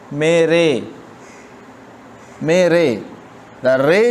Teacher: نہ الف ہے اور نہ یا ہے، ان دونوں کے درمیان ہے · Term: یائی مجہول